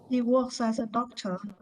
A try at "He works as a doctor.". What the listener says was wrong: Very good.